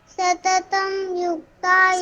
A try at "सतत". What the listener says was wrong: सततम नहीं है सतत